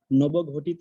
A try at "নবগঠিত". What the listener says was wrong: নবগঠিত, প্রথমটা অল্প প্রাণ, তারপর একটা মহাপ্রাণ। গঠিত, নবগঠিত না, ঘটিত বলেছেন, নবগঠিত।